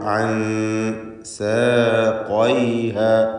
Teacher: ഖാഫിന് പൂർണ്ണമായ തഫ്ഖീം കൊടുക്കുക. ഇസ്തിഅലാഇൻ്റെ ഹർഫാണ്. · ശേഷം സീനാണ് വരുന്നത്. സീനിൻ്റെ മുമ്പിലായതുകൊണ്ട് ഇഖ്ഫാ മുറഖഖ് കൂടിയാണ്, തർക്കീഖോട് കൂടിയല്ല, നേർപ്പിച്ചുകൊണ്ടുള്ള ഇഖ്ഫാ.